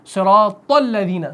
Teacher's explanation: صراط کے طا کو ہم الذین کے لام سے ملاتے ہیں، الذین کا حمزہ پڑھا نہیں جاتا وصل کی صورت میں